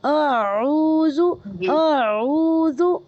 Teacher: آپ اقصائے حلق سے آواز آئے گی، پھر ایک دم سے وسط حلق پر ہمیں آنا ہے، اپنی آواز کو اوپر حلق کے پاس لے کر آنا ہے. تو دونوں کا فرق واضح ہونا چاہیے، دونوں لیٹرز ایک ساتھ جمع ہو گئے یہاں پر. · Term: حمزہ اور عین